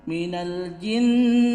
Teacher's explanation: Ketika kita menemukan mim tasdid atau nun tasdid, maka itu hukumnya gunnah. Dan gunnahnya itu panjang, tekanannya itu panjang.